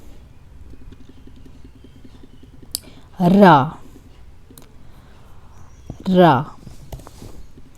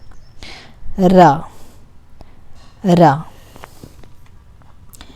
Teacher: It's not exactly like a rolling R, but it has a sharper sound. Not fully touching my tongue to the back of the teeth.